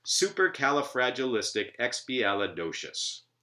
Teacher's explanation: the first syllable, su, and every other syllable following it, that is alternating syllables, are strong, while the ones in between them are weak